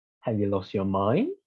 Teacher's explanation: the uh examples we can look at the criticizing one so we use a rising tone in order to criticize someone